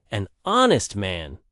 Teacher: The word honest starts with a vowel sound because the h is silent. So we say an honest man, not a honest man.